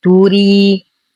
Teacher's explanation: تري. لدينا يا ساكنة ما قبلها راء مكسورة مرققة، فالمد الطبيعي يمد بمقدار حركتين